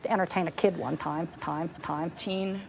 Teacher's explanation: Whereas Temple Grandin used the blade of her tongue which is the bit of the tongue right behind the tip. So the tongue tip is oriented down, and it's the blade of her tongue that's making contact or getting close to that alveolar ridge.